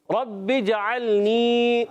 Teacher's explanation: यहाँ जीम में कलकला करेंगे